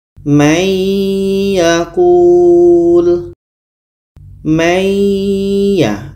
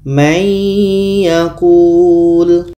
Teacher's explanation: Bunyi nun masuk kepada ya. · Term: idgham bi gunnah